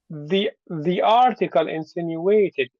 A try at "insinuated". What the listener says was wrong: you're giving a high tone, but the high tone is friendly. you won't give it any kind of high tones. You'll just keep it nice and low. Insinuated.